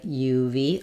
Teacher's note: the word of has a schwa and a v sound, so it sounds more like uv of.